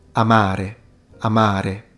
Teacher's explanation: So the second A is significantly longer than the first one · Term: long vowel